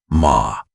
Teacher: The open sound at the back of the throat that requires the least muscular effort of any vowel. The most natural sound the human mouth produces.